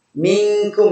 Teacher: minkum itu dibaca tipis karena kaf itu istifal. Qaf dan kaf sama-sama dari aksol lisan ya, sama-sama dari pangkal lisan, tetapi qaf memiliki sifat yang berbeda dengan huruf kaf.